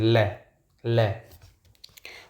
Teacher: ल देखो लुंठित होती है। हमारी जीभ मतलब मुड़ती है और फिर दोनों साइड में से हवा बाहर निकलती है। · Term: पार्श्विक व्यंजन